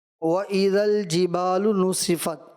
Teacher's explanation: سین میں سیٹی جیسی آواز محسوس ہوتی ہے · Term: سیٹی والا حرف